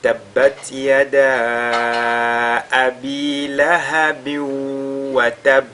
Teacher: La durée de prolongation, elle est de 4 ou bien de 5 harakat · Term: Al-Jaizul Munfasil